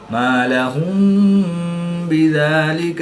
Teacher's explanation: میم ساکن کے بعد حرف با ہے تو یہاں پر اخفاء شفوی ہوگا یعنی غنہ زبانی کر کے پڑھیں گے۔